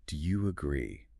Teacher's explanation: The rising voice makes it polite and inviting.